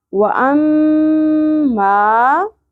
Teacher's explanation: میم مشدد پہ غنہ بھی ہوگا اور مد بھی کرنی ہے